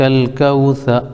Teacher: ثا کے اوپر زبر ہے، زبر کو جلدی پڑھیں، تھوڑا بھی نہ کھینچیں، زبر کی آواز اوپر کو اٹھتے ہیں